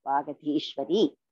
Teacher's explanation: Ga is Alpa Prana. Dhi is Mahaprana.